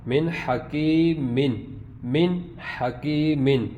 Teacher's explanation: نون کی آواز بالکل ظاہر ہے کیونکہ نون ساکن کے بعد ہا حروف حلقی میں سے ہے